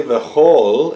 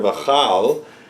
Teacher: Why do we say o rather than kal, vakal, okay? We say v'chol instead of v'chal because this is an unaccented syllable. That means here, this is going to take the sound of the o rather than the sound of the a that we normally have for the patach.